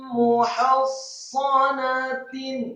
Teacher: Huruf sad bibir bawah kita agak ditutup, tidak sya atau tidak fa. Huruf sad seperti sin biasa, tidak tebal dan tidak tipis, namun posisi mulutnya agak tertutup, terutama bibir bawah kita.